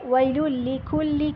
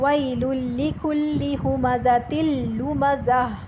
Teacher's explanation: ہم نے تن کی بجائے تل پڑھا کیونکہ آگے لام آ رہا تھا